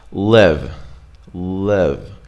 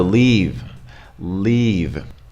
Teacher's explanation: it's kind of a prolonged long vowel e it's kind of a more tense Russian e kind of longer